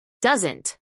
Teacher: acentuación en la primera sílaba